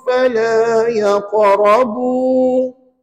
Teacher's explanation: kalau berhenti fala yaqrabu, bacalah dengan 2 harakat dan niatkan mad asli